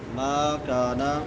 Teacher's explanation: ما میم کے بعد الف مدہ ہے، کانا کاف کے بعد بھی الف مدہ ہے، دونوں کو ایک الف کے برابر لمبا کریں گے